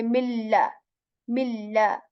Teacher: no nasalized sound making on letter lam here. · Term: complete assimilation